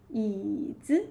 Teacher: Even the neutral tone is higher than the third tone.